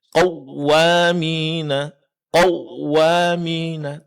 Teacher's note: terlalu menekan pengucapan huruf waw khususnya ketika dia berbaris tasydid